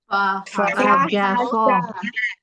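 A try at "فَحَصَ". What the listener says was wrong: Fahaso. Fahaso pakai H. Fahaso.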